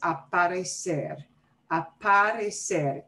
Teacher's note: probably you hear a little bit of punch also on the par part of aparecer